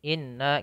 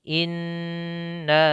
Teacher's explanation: maka wajib ditahan n-nya, diwajib ditahan gunnahnya. In tidak boleh buru-buru ya. Tidak boleh inna gitu ya, tapi ditahan dulu sedikit pelan-pelan.